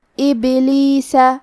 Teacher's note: قلقلہ کا معنی ہے حرف ساکن کو ہلانا تو ہم با کو ہلاتے ہوئے یہ کلمہ کو پڑھیں گے